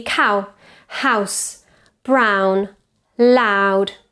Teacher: Diphthong ow starts at an A position and goes towards an O. Ow, ow, as in cow.